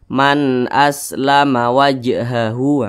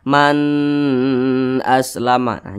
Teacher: hamzah hukumnya izhar halq dibaca jelas tidak berdengung jadi jangan ditahan atau jangan dipanjangkan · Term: izhar halqi